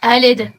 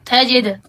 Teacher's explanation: ان میں دال ہے، دال پر قلقلہ لازمی کرائیں